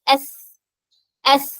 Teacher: okay ഇനി next letter ആയിട്ടുള്ള സ എന്നുള്ള അക്ഷരം അതേ സ്ഥലത്ത് തന്നെയാണ് നാവിന്റെ അറ്റം മുകളിലെ താഴ്ഭാഗത്ത് ടച്ച് ചെയ്തിട്ടാണ് സ പറയുന്നത്